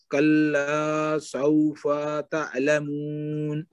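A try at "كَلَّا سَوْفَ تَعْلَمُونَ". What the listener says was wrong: فا کو لمبا نہیں کرنا، نہیں فا کو لمبا نہیں کرنا، کلا سوفا نہیں کہنا، کلا لام کو تو لمبا اس لیے کیا نا کہ اس کے بعد الف مادہ ہے،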